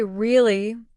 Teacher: For example, if someone says really with a rising tone, it means surprise or curiosity. But if they say really with a flat or falling tone, it might mean disbelief or even boredom.